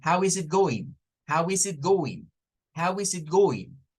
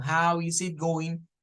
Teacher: is it is it is it como una sola frase no no separadas